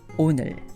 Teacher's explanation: by the end of saying the word 오늘, you should find your tongue right behind your upper teeth